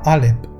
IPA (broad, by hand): ʔalep